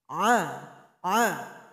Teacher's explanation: huruf Ain keluar dari tenggorokan pertengahan diatas huruf hamzah